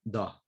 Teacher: And in Eastern Andalusia, when we have a vowel followed by a consonant and the consonant is deleted, let's say S is deleted, the vowel is, so the consonant is deleted and the vowel opens, the vowel lowers, becomes a bit of a lower vowel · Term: vowel lowering